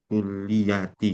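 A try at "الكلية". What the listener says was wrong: Lam sama yanya tasydid. Ilal kulliyati.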